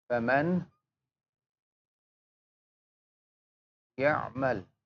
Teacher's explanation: We join it or merge it with gunna. Means we take the sound to the nose, and always remember ikhfa and idgham harakatain. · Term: idgham with gunna